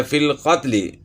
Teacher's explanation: لام تعریف کے بعد قاف ہے، اور قاف حروف قمری میں، اس لیے لام جو ہے وہ پڑھا جا رہا ہے، اس کا ادغام نہیں ہوا، یعنی سائلنٹ نہیں ہوا۔